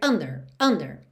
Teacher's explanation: normalmente a palavra under tem a sílaba tônica na primeira sílaba